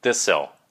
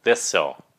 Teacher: This will các bạn phải giữ cái âm S, các bạn phải L nó phía sau